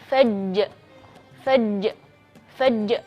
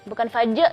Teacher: tidak boleh di ujungnya ada Hamzah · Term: Qalqalah kubra